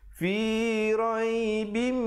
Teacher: Fi raibim, didengungkan di situ. Tanwin bertemu mim, idgham bi gunnah. Mim, di situ wajibul gunnah, dengungkan 2 harakat.